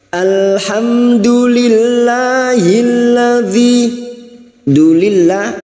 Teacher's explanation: lam jalalah yang didahului kasrah kita baca tarkik atau tipis